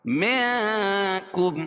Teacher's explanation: حروف اخفا کے 15 حرفوں میں سے کاف ہے، تو یہاں ناک میں آواز کو چھپا کر پڑھیں گے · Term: اخفا حقیقی